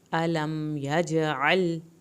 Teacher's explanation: الم یجعل، الم پہ میم نہیں ہلے، یاج پہ ہم نے جیم کا قلقلہ کیا ہے، اس کو خوب ہلانا ہے۔ عین کو حلق سے پڑھنا ہے، یجعل، لام کو نہیں ہلانا۔